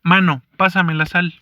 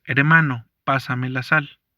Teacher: supresión de sonidos al inicio de una palabra